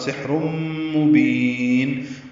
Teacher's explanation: تنوین کے بعد میم آنے کی وجہ سے ادغام ہے، غنے کے ساتھ